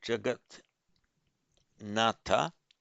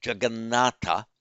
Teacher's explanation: and now by Sandhi, the T becomes an N.